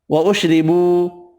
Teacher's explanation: را زیر کی وجہ سے باریک پڑھیں گے، واو مدہ یا مدہ ایک ایک الف کی مقدار میں کھینچ کر پڑھیں گے